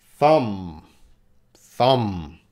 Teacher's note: But when we're talking about your thumb, that B is silent.